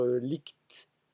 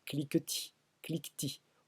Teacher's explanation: un tel mot en français devrait se dire lict, comme dans cliquetis, cliquetis, au nom du principe d'assimilation de dévoisement